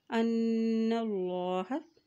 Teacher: نون کے پر شد ہے اور جب بھی نون کے پر شد آ جاتی ہے تو وہاں پر غنہ ادا کیا جاتا ہے